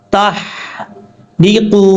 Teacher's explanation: تا کے بعد جو ہا ہے اس ہا کو آپ نے بریک پڑھنا ہے